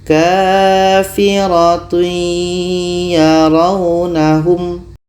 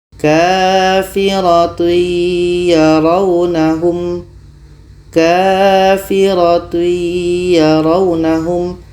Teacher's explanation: Yaitunya masuknya kurang sempurna. Ketika tanwin bertemu ya, bunyi tanwin ini tidak sempurna masuk ke ya. Masih ada bunyi tanwinnya. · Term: idgham naqish